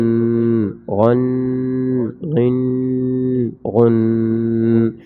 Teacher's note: غین کو موٹا کر کے پڑھیں گے، پہلے غننے کے ساتھ